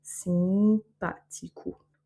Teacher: Donc ici, on a le A qui a un accent, donc il est tonique. Le O à la fin qui va se prononcer OU